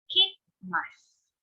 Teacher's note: So in here, in kikmasu, or to listen, we made the second I of the ki silent, and then the u of the su. So instead of saying kikimasu, we say kikmasu.